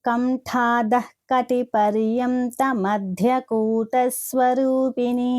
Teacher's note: ఠ అనేది మహాప్రాణాక్షరము, అలాగే ధ అనేది కూడా మనకి మహాప్రాణాక్షరం